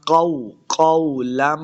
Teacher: قوف کو موٹا پڑھیں گے، لمبا بالکل نہیں کرنا